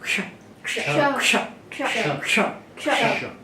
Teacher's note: का और मूर्धन्य श, काशा संयोग है क्ष।